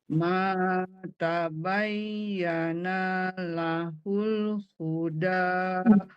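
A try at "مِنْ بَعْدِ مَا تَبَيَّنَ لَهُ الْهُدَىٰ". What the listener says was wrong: jangan panjang naknya. Tabayyana tuh.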